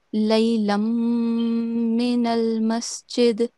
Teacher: we are not pronouncing the tanween. We are joining the tanween into the meem mushaddad. And while we do that, we are going to make a 2 second nasal sound.